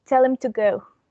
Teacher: the grammatical words him and to are unstressed and have a weak form when it's pronounced inside a sentence. So when these words are isolated, we pronounce them as him and to, but when they are inside a sentence, we pronounce the weak forms that are and to.